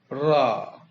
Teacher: इनमें मुख द्वार जीभ की नोक से जल्दी बंद होता है और 2-3 बार खुलता है, जैसे रा। ये लुंठित कहलाएगा।